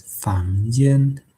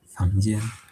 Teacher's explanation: It first rises and then becomes flat, or the first tone. So it is a combination of rising and the first tone, or second tone and the first tone.